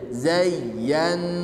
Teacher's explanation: tasydid yang kedua Nun bertasdid tidak memiliki na bertekanan seperti ya dia hanya ghunah ya maka ketika dibaca ditahan lebih lama di huruf nunnya